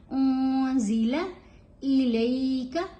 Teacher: यहाँ नून साकिन है और उसके बाद जा है, तो यहाँ इहफा होगा, नून की आवाज गुनगुनी होगी, क्लियर नहीं होगी